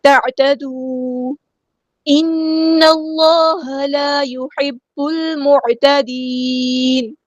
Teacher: To count لمبا کروں گی، تعتدوا ان اللہ لا يحب المعتدین. نون پہ غنہ زمانی ہو رہا ہے، ٹو کاؤنٹس یہاں پہ رکیں گے